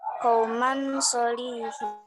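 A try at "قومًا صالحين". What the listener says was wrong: Dengung, Bu, dibacanya. Qaumang solihin.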